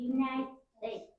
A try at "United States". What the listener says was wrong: That was better. I heard a d. Because normally it tends to be like United States. That's what I hear, okay?